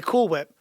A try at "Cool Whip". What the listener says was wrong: Why are you doing that thing with the H?